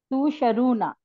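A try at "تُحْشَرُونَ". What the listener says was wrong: टू के बाद यहाँ पे हा है, हा को प्रोनाउंस करें। तो तो शरूना। हशर से है। हाँ ये हा है यहाँ पे, और मुझे लगा कि आपने देखा नहीं होगा।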